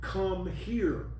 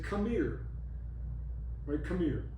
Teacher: You allied, that you drop the H and you put the two together